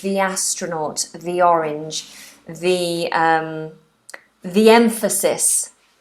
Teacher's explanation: So the astronaut, the orange, the emphasis, okay? So the with a long E, the is for going before words that begin with a vowel.